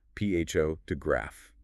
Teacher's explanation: The stress is heavily on the first syllable. pho-to-graph The other syllables are weaker. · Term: word stress